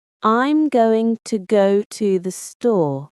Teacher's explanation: When people say it fast, you mostly hear gunner and store. The words to and the between go and store are very quick. They fly by. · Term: rhythm